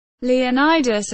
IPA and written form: liːˈɒnᵻdəs (Leonidas)